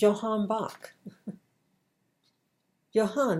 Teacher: the J in the Germanic languages it has a Y sound